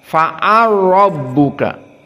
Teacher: Fa'ala lam fathah, rabbuka ra fathah. Kemudian di sini dijadikan idgham al-kabir jadi fa'al rabbuka. Masuk lam kepada ra.